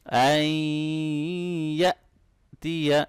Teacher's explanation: جب بھی حمزہ ساکن ہوگا ہم اس کو جرکنگ ساؤنڈ کے ساتھ پڑھیں گے، جھٹکا دے کے پڑھیں گے